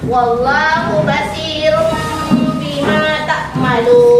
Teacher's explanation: mengubah suara n menjadi m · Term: iqlab